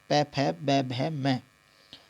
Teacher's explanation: ओष्ठ्य व्यंजन इसलिए होते हैं क्योंकि ये सारे वर्ण होठ से बोले जाते हैं, यानी कि पै फै सभी में दोनों होठों को मिलाकर वर्ण बनता है